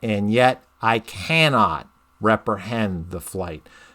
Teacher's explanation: so um that that would be called the spondalic substitution because it's two stressed syllables the i and can are both stressed the way i read you could read it and yet i